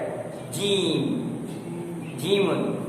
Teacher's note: जीम जब जबान का बीच ऊपर तालू से चिपक जाए